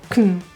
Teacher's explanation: The word can is reduced to a quick C to N. Get rid of the vowel. Kn.